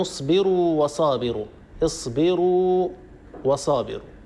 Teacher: الواو الأولى ساكنة والواو الثانية متحركة وهما حرفان متماثلة، لكن هنا لا يمكن أن ندغم، لماذا؟ لأن الساكن الأول هو حرف مد.